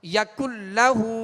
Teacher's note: یکلہ، اب نون لام سے مل گیا، نون ساکن کے بعد لام ہے لہٰذا یہاں ادغام کریں گے مگر بلا غنہ، غننے کے ساتھ نہیں کریں گے۔